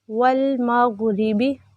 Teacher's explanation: غائن موٹا پڑھیں گے، روا باریک کیونکہ روا کے نیچے زیر ہے